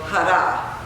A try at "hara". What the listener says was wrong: That's good. But you have to really shout it.